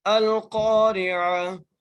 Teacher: کو لام سے ملا کر پڑھ رہے ہیں، ٹھیک ہے، اور قاف کو ایک الف کی مقدار کھینچ کر پڑھیں گے، قاف موٹا کر کے پڑھیں گے · حمزہ کو لام سے ملا کر پڑھ رہے ہیں